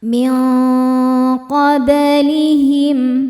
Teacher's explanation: alladzina min qoblihim [bernyanyi] min ada hukum ikhfa hakiki ab'ad ya karena nun sukun bertemu huruf qof cara bacanya nun disamarkan ke qof disertai dengungan dengungnya besar karena apa karena qof makhrajnya jauh dari nun